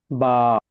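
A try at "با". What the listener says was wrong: মাশাআল্লাহ, আপনি সুন্দর পড়েছেন।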